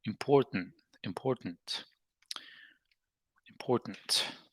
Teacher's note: So in American English, the T in important, the T is a so-called stopped T, in the sense that instead of releasing the buildup of air pressure that we talked about, the tip of the tongue touching the alveolar ridge is not released. Consequently, the schwa sound is not generated.